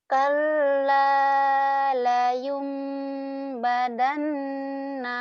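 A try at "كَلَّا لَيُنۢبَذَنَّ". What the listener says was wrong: Itu kan ada titiknya, badan. Bazan, Layum bazan ya, bukan badan, bukan dal tapi elal. Agak cedal sedikit. layum bazan.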